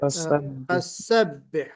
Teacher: فسبح میں آپ نے فصبح سین کی جگہ صاد جی نکل دیا ہے